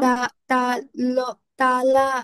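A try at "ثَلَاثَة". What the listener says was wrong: সালাসা, this one সাব, not সালাসা। সাটাকে soft, সালাসা।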